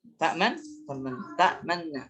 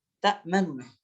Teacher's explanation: Jadi nun yang pertama ini dileburkan kepada nun yang kedua dengan isyarat ismam. Ismam ini isyarat dhammah.